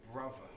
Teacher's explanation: he's using the v on brother. So it's not brother, it's brother.